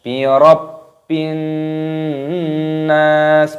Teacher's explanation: nunnya berharokat tasdid, maka diidghamkan, dimasukkan dan disertai berdengung